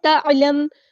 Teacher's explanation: تعلم، عین کو مستحلق مڈل تھروٹ سے ادا کرنا ہے، تعلم، میم ساکن پر اظہار شفوی ہوگا، ہم نے اس کو ظاہر کرنا ہے ، مطلب ہم نے ایک تو چھپانا نہیں ہے میم کو